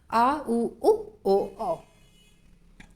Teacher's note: पश्च स्वर जीभ के पश्च भाग का प्रयोग जहाँ होगा वहाँ पश्च स्वर होगा